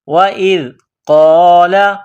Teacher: حمزہ کو ذال کے ساتھ ملانا ہے, ذال کو باریک کرنا ہے. وَإِذْ قَالَ, قاف کو موٹا کرنا ہے.